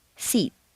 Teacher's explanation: when you have a word ending in an unvoiced consonant one that you whisper you'll notice that the preceding vowel is said quite quickly and on a single stair step